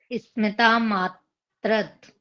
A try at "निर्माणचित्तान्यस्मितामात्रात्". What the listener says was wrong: मात्रात आ की मात्रा है।